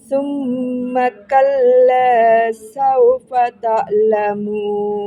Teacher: Tak lamunnya jangan lari ke hamzah. Tengah tenggorokan.